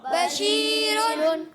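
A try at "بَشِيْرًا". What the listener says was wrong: good,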